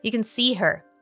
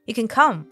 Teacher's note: When it is positive, it's usually reduced, and if you train your ear, you'll notice the schwa sound